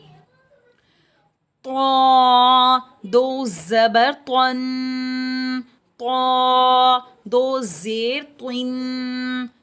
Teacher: طا چونکہ ایک موٹا حروف ہے تو اس لیے طا کو پر کر کے موٹا کر کے پڑھیں گے، اور اس لیے تا اور طا میں فرق کرنا ہے ہم نے.